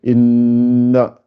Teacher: Euh, il y a des irfa, beaucoup de irfa, nun avec shadda, donc il faut rester deux temps